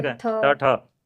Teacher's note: और मुरधन्य से बोले जाते हैं वो मुरधन्य से ट वर्ग